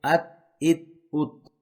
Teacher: इसमें ता में कलक नहीं होगा